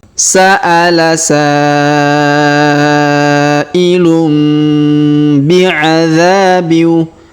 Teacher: Perhatikan huruf dza. Kita panjangkan 2 harokat karena alif di depannya.